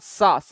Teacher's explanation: सा में हमारी जीभ नीचे वाले दांत के भाग में स्पर्श होती है